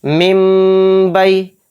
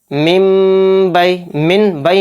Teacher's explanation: तो देखिए यहाँ पर नून साकिन आ गया, नून साकिन के बाद बा आ रहा है तो इसमें इक़लाब का कायदा हो रहा है, और इस नून को हम साइलेंट करके मीम में बदल देंगे। यानी ये पिछले वाले मीम से मीम मिलकर पढ़ा जाएगा, नून नहीं पढ़ा जाएगा।